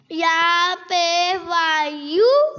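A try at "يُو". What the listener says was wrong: غلط. کیا غلطی ہوئی ہے؟ واو کو لمبا نہیں کیا. یہ واو مدہ ہے نا. دیکھو واو جزم والی ہے. یہ دیکھو واو کیا ہے اور اس سے پہلے پیش ہے تو واو کو کیا کرنا تھا؟ آپ نے لمبا نہیں کیا.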